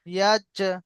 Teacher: যখন জিমের উপরে সাকিন করা হবে তো জিমকে আমরা একটু চাপ দিয়ে পড়বো। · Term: কলকলা